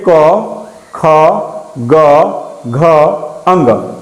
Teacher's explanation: ये जो कवर्ग है इसका उच्चारण स्थान क्या होता है, कंठ होता है बाबू। क्या होता है, कंठ से निकलता है।